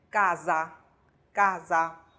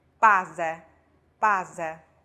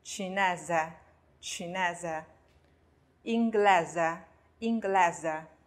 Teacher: 如果这个 s 呀，它是夹在两个元音中间，我们把它发成 z 的音。